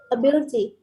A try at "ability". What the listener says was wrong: Yeah, perfect.